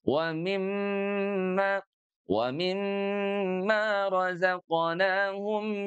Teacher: Masuk dari rongga hidung, mimma itu pun juga masuk dari rongga hidung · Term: gunnah